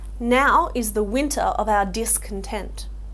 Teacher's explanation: here we've got now as stressed, so that's the first syllable, that's a reversed foot